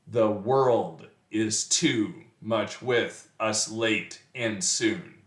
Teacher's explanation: the first being unstressed the and the second syllable World being stressed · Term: iamb